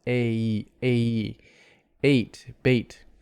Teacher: the bait vowel is longer because it's actually a double vowel it's an a plus an e so we don't have a · The A glides into an E. They're together. It's a glided vowel. What we call a diphthong.